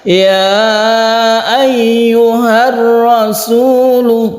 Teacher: ini juga ditekan ke huruf ra karena dia ini idgham yaitu Idgham Syamsiah